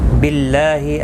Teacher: اللہ کا لام زیر کی وجہ سے باریک پڑھا جائے گا، اس کے اوپر کھڑی زبر بھی ہے، ایک الف کی مقدار کے برابر کھینچ کر پڑھیں گے.